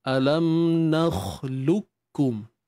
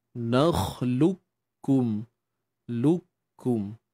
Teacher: Makhraj serta sifat bagi qaf tu dia akan lenyap. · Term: idgham kamil